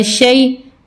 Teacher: یا ساکنہ سے پہلے زبر ہو تو ہم اس کو کھینچتے نہیں ہیں، مجہول نہیں پڑھتے، اس کو ہم جلدی جلدی پڑھتے ہیں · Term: حروف لین